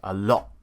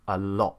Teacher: So we can glottalize the T.